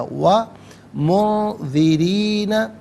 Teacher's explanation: وَمُنذِرِينَ، را کے نیچے زیر ہے، یہاں پر بھی باریک کر کے پڑھا جائے گا۔ اور منذرین میں آپ دیکھیں نون ساکن اس کے بعد ذال حرف اخفا ہے، تو نون ساکن کو اخفا کے ساتھ پڑھیں گے۔